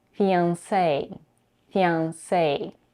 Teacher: And as in the case of ballet in English, the final vowel is pronounced as the diphthong A.